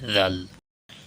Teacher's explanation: দাল জিহ্বার আগা সামনের উপরের দুই দাঁতের গোড়া হইতে উচ্চারিত হয়। দাল জিহ্বার আগা সামনের উপরের দুই দাঁতের আগা বা সামনের দিক থেকে উচ্চারিত হয়।